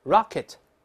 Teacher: 这个词名词动词重音都在前面